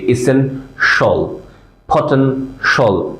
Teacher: ফটেন শল, শাল বলিনি, কিন্তু ফটেন শাল বলিনি। আ সাউন্ডটাকে আমরা বাদ দিয়ে দিয়েছি, শল বলেছি